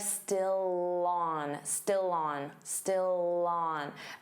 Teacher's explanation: Notice how still and on link together and you'll hear that L sound on